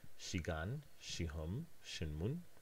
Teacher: we only see the [ʃ] whenever it is followed by the sound [i] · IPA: [ʃigan], [ʃihʌm], [ʃinmun], [ʃigan]